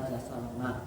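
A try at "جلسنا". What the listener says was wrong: Jalasna. Terbalik. Jalas.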